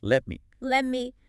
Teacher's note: And the vowel in me can weaken